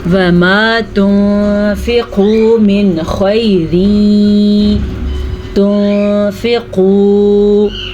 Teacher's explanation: نون ساکن کے بعد فا حروف اخفاء میں سے ہے تو اخفاء ہوگا، قاف کو پر پڑھیں گے، واو مدہ کو ہم کھینچ کے پڑھیں گے۔